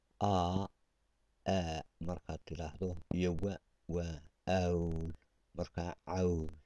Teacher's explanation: A iyo wa markay israacdaan waa aw.